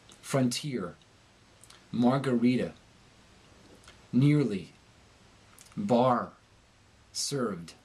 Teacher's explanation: when r appears at the end of a word the american speaker pronounces it with a hearty resonance in the throat and upper chest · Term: the hard r, the hard R